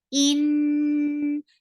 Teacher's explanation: Hamza should be from your throat. The sound should be very sharp. In, and give gunna on noon.